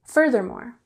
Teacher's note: Furthermore has the emphasis on the first syllable